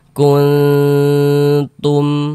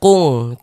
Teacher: Dibaca samar dan berdengung.